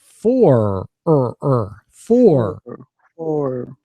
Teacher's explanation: for has that nice strong American R so we want to say for like or with an F